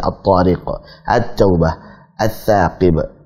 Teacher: Sehingga kalau ada lam sukun pada alif lam ta'rif ketemu dengan huruf setelahnya kok cara bacanya sama dengan kata asy-syams, yaitu melebur ke huruf berikutnya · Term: Alif lam syamsiyah